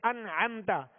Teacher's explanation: اسی طریقے سے نون ساکن اور تنوین کے 4 قاعدے، نون ساکن یا تنوین کے بعد حروف حلقی میں سے کوئی حرف ہے تو اظہار بغیر غنہ کے پڑھیں گے، جیسے انعمت، نون ساکن کے بعد عین حروف حلقی میں سے آئی تو اب اس میں غنہ انعمت نہیں پڑھیں گے۔